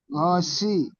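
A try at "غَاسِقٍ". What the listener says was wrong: গসি, গ, গয় নারী জবর গ, একালি পরিমাণ টান, গসি। জি গ সিকিন।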